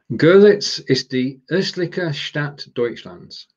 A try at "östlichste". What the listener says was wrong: Yeah, almost. You're missing out a st there. Görlitz ist die östlichste Stadt Deutschlands. Ist die östlichste. The reason why I'm emphasizing that is because östliche and östlichste means slightly different things.